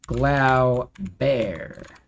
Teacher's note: I would put the emphasis on the second syllable.